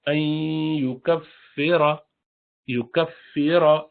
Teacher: ادغام ما غنہ کریں گے، این غنہ ہوگا، ناک میں آواز آئے گی. این یکفر، یکفر، را پر فتحہ اس لیے اس کو بھاری پڑیں گے. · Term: مفخم